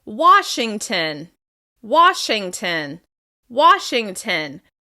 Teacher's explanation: Washington is stressed on the first syllable.